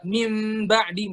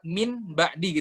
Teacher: Nah, beliau mengajarkan kalau jalur Mesir itu, kalau misalnya iklab itu min ba'di, misalnya min ba'di gitu. Bibir kita nggak sepenuhnya nutup kayak mim ba'di, tapi harus ada rongga angin sedikit yang sebesar ujung pulpen.